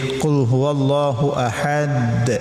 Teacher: Qalqalah kubra itu ada di penghujung ayat atau ketika wakaf ya seperti qul huwallahu ahad. Nah, ini di agak keras pantulannya.